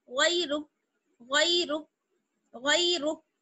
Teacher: یا جو ہے وہ حروف لین میں سے ہے، اس لیے اس کو جلدی پڑھیں گے، کھینچیں گے نہیں. غیرک ایسے کھینچنا نہیں ہے، جلدی سے پڑھنا ہے.